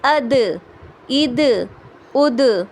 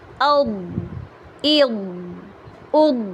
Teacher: دال قلقلے والا بھی ہے، لائٹ بھی ہے، اور ضاد بغیر قلقلے کا ہے اور ہیوی ہے